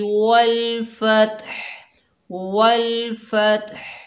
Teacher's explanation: वक्फ़ की हालत में हा की साउंड वाज़ेह होनी चाहिए।